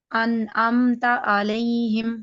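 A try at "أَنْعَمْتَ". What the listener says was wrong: نہیں، آپ کا حمزہ ٹھیک ہے، عین ٹھیک نہیں ہے۔ ان انعمت انعامت.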